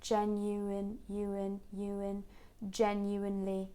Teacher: between you and in, genuine, we get this subtle linking w. So it's just to help us to transition from one vowel to the next smoothly.